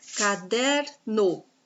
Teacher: o der é a penúltima sílaba é a sílaba mais forte a sílaba tônica então aqui eu tenho a paroxítona problema ble